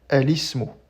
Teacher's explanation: Mais puisqu'il commence par une hamza wasl, eh bien, cette coupure du hamza va disparaître lorsqu'on le fait précéder par exemple de l'article el